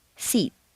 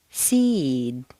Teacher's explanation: vowel is said quite quickly and on a single stair step when a word ends in a vowel or a voiced consonant one that you say the preceding vowel is said more slowly and on a double stair step · you'll notice that the preceding vowel is said quite quickly and on a single stair step